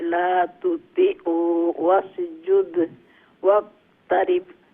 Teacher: হ্যাঁ দালের উপরে কালকালা করবেন, ওয়াক্তারিব বার উপরে কালকালা